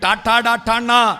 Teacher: ഈ നാവ് എങ്ങോട്ട് വളച്ചാലും വളയുന്ന വിധത്തിൽ കണ്ഠനാളത്തിൽ നിന്ന് കാഖാങ്ങ കണ്ഠ്യവും, ആ നാവ് അണ്ണാക്ക് പറ്റിച്ചിട്ട് ചാച്ചാഞ്ഞ താലവ്യവും, ആ നാവിന്റെ അറ്റം മൂർധാവിൽ കുത്തിയിട്ട് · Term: മൂർധന്യവും